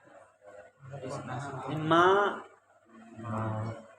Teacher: और सानुनासिकस्तु मुखनासिका भवः, और अगर अनुनासिक के सहित हो तो मुखनासिक भी होता है। माँ, मुंह भी खुलता है और नाक से भी निकलता है ना, माँ। अर्धचंद्राकृति होने के कारण कहा है, एक स्वरूप कैसा है इसका, बोले अर्धचंद्राकृति वर्ण विष्णु चाप नामा।